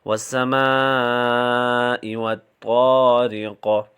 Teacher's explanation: So ta is pronounced unheavily and ta is pronounced with a full mouth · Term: heavy letter